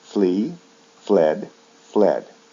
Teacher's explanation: when we convert it to the past and past participle a consonant sound d is added